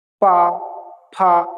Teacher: ओठ से टकराकर ही आवाज निकलेगी, बिना ओठ के आप पा नहीं बोल पाएंगे कभी। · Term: ओष्ठ्य